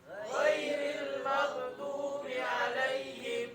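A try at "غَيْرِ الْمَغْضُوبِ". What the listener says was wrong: Nah, ini banyak yang salah juga nih. Di ghairil maghdu, ghain itu bukan huruf qalqalah. Jadi tidak dipantulkan. Jadi ghairil maghdu. Nah, dalam bacaan maghdu juga mim itu huruf tipis dan ghain itu huruf tebal. Biasanya orang salah baca gini.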